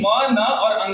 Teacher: म, न और अंगा को हम लोग नाक से प्रोड्यूस करते हैं